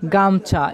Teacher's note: এই গামছা শব্দে আমরা গা এই শব্দটির উপর শাসাঘাত দিচ্ছি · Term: শব্দ শাসাঘাত